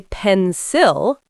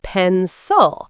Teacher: The I becomes a schwa.